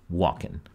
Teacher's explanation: the merger of a sound, the engma, the velar N, with the alveolar one, N